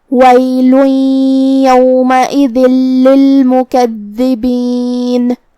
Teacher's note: کلمت للمکذبین میں یہاں دال کے تشدید کا دھیان رہے، دو حرف کے برابر ہم حرف الدال کو پڑھیں گے. آخر میں نون پہ رکیں گے تو اس پہ جزم سے رکیں گے، لہذا ہم نون کو ظاہر کریں گے